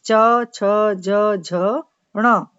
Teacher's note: उच्चारण अवयव उच्चारण स्थान को स्पर्श करने के बाद दूर हटते हैं, किंतु फिर भी इतने निकट रह जाते हैं कि वायु घर्षण करती हुई यानी रगड़ खाती हुई मुख से बाहर निकल पाती है। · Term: स्पर्श संघर्षी व्यंजन